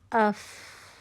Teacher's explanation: دوسری quality check کریں۔ اف، آواز جاری رہتی ہے، رخاوہ کی کوالٹی ہے